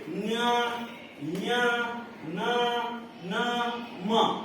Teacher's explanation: ಮೂಗಿನಿಂದ ಉಚ್ಚಾರ ಮಾಡ್ತಕ್ಕಂಥ ಅಕ್ಷರಗಳನ್ನ ಅನುನಾಸಿಕ ಅಂತ ನೋಡ್ರಿ